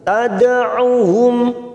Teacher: mim sukun bertemu hamzah idhar safawi kita baca jelas tanpa mendengung